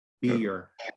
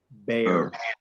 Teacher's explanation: the first element of the diphthong here, the one in beer, has an I, but in bear, in oso, it is an E, is the first element.